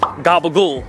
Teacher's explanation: One thing about us Italian Americans that we do is we don't pronounce our vowels at the end of the word.